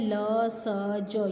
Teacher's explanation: ये दांतों की सहायता से बोले जाते हैं, इसलिए दंत